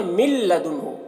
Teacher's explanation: نون ساکن لام کے ساتھ اس طرح مل جا رہا ہے کہ نون کو بالکل بھی نہیں پڑھا جا رہا۔ ہم اسے پڑھتے ہیں من لدنہ، تو نون کو بالکل بھی نہیں پڑھا گیا، یہ نون لام کے ساتھ مل کر بالکل ایک حرف بن گیا، نون بالکل ختم ہو گیا، تو یہ اس کو ادغام تام کہتے ہیں کہ بالکل 2 حرف ایک حرف بن گیا۔